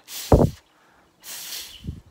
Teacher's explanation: F together okay now the letter F sounds like this when you use your bottom lip and your top teeth and you kind of put your bottom lip on top